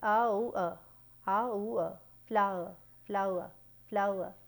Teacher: When we say flower, we are actually saying three vowels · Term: triphthong